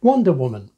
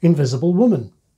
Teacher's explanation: some are stressed on the first part like Wonder Woman and some on the second part like Invisible Woman